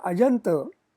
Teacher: Also, in Ajanta, cha plus a has become ja. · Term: Sandhi